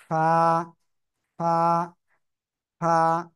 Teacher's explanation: নিচের ঠোঁটের পেট উপরের দুই দাঁতের আগার সাথে লাগাবেন লাগিয়ে হালকা বাতাস বের করে এক আলিফ টা নিয়ে উচ্চারণ করতে হবে